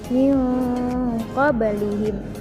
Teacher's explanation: ada nun mati bertemu dengan qaf, termasuk hukum bacaan ikhfa hakiki. Cara membacanya dengan disamarkan